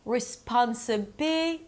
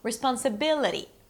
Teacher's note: it's not resPONsible, it's 'responsiBI' - this is the primary stress